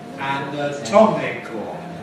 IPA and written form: ˌænəˈtɒmɪkl̩ (anatomical)